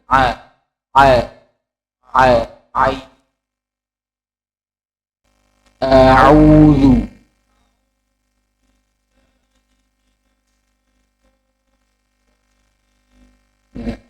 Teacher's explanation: Ain tidak boleh dari hidung tidak boleh keluar dari hidung